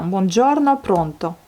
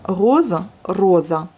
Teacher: Donc R roulé comme celui de l'italien.